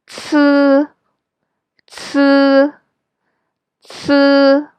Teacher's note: C is similar to English pronunciation ts, ts. But remember to vibrate your vocal cords and pronounce it a little bit longer